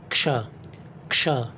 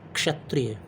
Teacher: जैसे इससे क्षत्रिय जब बनता है तो छत्री नहीं पढ़ेंगे उसे हम लोग, छत्री नहीं, क्षत्रिय। क्षत्रिय यानी आधा क और मूर्धन्य श को मिलाकर बनता है क्षत्रिय वाला क्ष। त्र जो है वो आधा त और र को मिलाकर बनता है। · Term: संयुक्त व्यंजन